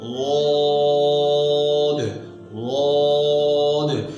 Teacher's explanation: درمیان اٹھا اور اوپر کی تالو کے ساتھ چمٹ گیا جس کی وجہ سے حرف غاد خوب موٹا ہو گیا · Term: اطباق